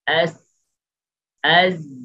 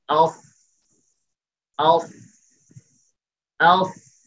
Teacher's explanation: সিন এবং যা নিচের দিকে, আর সাদ, সাদটা হচ্ছে জিহ্বার গোড়াটা উপরের দিকে। এতটুকু পার্থক্য আছে এই হরফগুলো, এই হরফগুলোর মধ্যে, বাকি মাখরাজ এক।